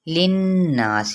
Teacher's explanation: للناس غنہ کرتے ہوئے مد اصلی بالالف